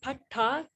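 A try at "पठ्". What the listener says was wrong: Pat. Just stop on the consonant. Pat.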